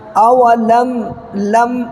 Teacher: میم ساکن کے بعد دیکھیے یا آ رہا ہے تو میم کو ظاہر کر کے جلدی ادا کرنا ہے